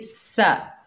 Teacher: सीन के ऊपर ज़बर है, बगैर खींचे पढ़ेंगे सा। सीन को सख्ती और सीटी से अदा करेंगे।